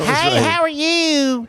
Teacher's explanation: Appalachia. And a lot of people speak through their nose there